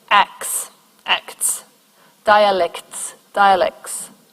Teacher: simplifying consonant clusters by dropping a middle t